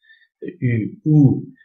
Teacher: voyelle d'arrière, haute, non nasale, arrondi